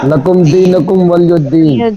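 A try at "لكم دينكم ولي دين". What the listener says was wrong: ولی دین ولی الدین نہیں ہے. ہاں لکم دینکم ولی دین.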